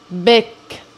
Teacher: First, the 40 milliseconds before the short, explosive release burst of the initial b. The lips are closed, and we hear the voice onset, followed by additional audible but dull voiced impulses while the lips begin moving, but still only slightly.